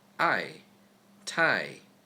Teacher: The fourth tone is most frequently used in English. Say a one-syllable word or letter normally, without any context, you'll just get the fourth tone.